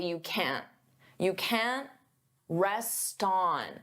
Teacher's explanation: Native speakers often pronounce T as a flap T, which means we don't push out that puff of air